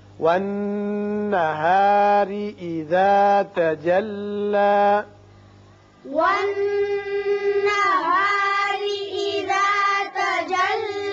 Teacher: نون مشدد ہے، غنہ ہوگا. را کے نیچے زیر ہے، اس کو باریک پڑھیں گے